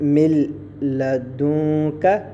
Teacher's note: یہ دیکھیے نون ساکن اس کے بعد لام ہے, یہاں ہم ادغام تو کریں گے مگر غنہ نہیں کریں گے